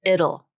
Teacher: And so you have this, it's called syllabic consonant. You have the L just eating up that vowel, so there's no vowel sound there.